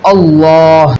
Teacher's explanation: تو اس میں جلالت کے لام کو ہمیشہ پر پڑھیں گے